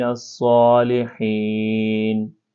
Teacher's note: تو یہ دوستو، یہ جو نون مشدد ہے یہاں پر جو ہے آپ نے غنّہ کرنا ہے، یعنی اس طرح پڑھنا ہے وَإِنَّهُ، اور اس طرح جو ہے فِي الْآخِرَةِ، فِي الْآخِرَةِ لَمِنَ الصَّالِحِينَ، صاد کو آپ نے جو ہے موٹا کر کے پڑھنا ہے